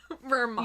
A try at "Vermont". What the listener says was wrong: You don't pronounce the T. You don't pronounce the T. It's like a rest at the end. Vermont.